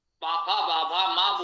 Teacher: प वर्ग के उच्चारण में ओष्ठों के मिलने से मुख बंद हो जाता है, अतः इसका प्रयत्न संव्रत है।